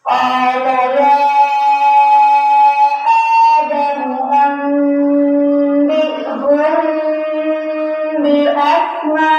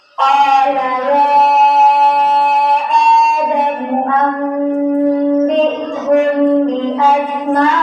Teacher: Mimnya dibaca samar sambil berdengung. · Mim samar dan disertai dengan dengungan. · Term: ikhfa syafawi